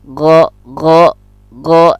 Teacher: gha ini juga termasuk rakhawah, dia berlalu, tidak tertahan. Go. Nah, go bukan go, tapi go, harus berlalu, harus pelan-pelan.